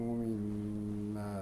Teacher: ميم مشددة فيها الغنة